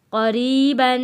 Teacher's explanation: قاف کو موٹا پڑا گیا، را کو پتلا پڑا گیا کیونکہ را کے نیچے زیر ہے۔